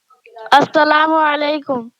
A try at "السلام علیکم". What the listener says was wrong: سلام میں سین ہے جی، نہ کہ صاد ہے. السلام علیکم. یہ ہے دیکھو سین ہے نا. سین کو سین ہی پڑھتے ہیں، صاد نہیں پڑھتے ہیں.